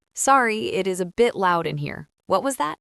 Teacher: You want your pitch to go up at the very end of the sentence to show that you are asking a friendly question. >> Right? If your voice goes down, it sounds a little angry. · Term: intonation